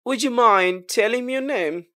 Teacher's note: ডি এর পরে ওয়াই আসলে ডি এবং ওয়াই মিলে জ হয়ে যায় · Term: ইউড কলিসেন্সের